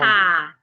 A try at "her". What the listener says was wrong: Do not open your mouth wide. And ensure that your tongue is in a relaxed position.